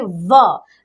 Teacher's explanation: इसी प्रकार दंतोष्ठ, दंतोष्ठ मतलब दंत और ओष्ठ की सहायता से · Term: दंतोष्ठ वर्ण